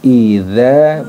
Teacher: idza letaknya yaitu pada ujung lidah ya, ujung lidah bertemu dengan ujung gigi seri atas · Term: zal yang ada titiknya